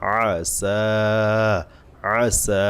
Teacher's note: সিনে টান হবে আইন টান হবে না